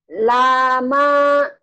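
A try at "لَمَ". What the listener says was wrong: Bukan. Tapi lanya pendek. Lanya pendek. Lama. Kan lam dulu nih, lama.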